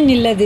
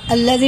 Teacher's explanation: آیت نہیں کریں گے تو نون لگا کے پڑھیں گے، آیت کریں گے تو الف لگا کے پڑھیں گے